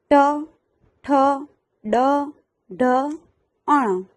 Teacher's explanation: મુરધા એટલે કે જીભના ઉપરના ભાગથી થાય છે એટલે કે જીભ વળીને ને તાળવે ચોંટે છે · એટલે કે જીભ વળીને તાળવે ચોંટે છે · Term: મૂર્ધન્ય